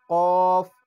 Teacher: কফ এটা হচ্ছে জিহ্বার গোড়া থেকে কফ কফ। জিহ্বার গোড়া উপরের তালুতে লাগে